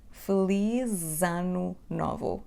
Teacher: When we connect these three words, the sound sh from the first word feliz becomes z in between two vowels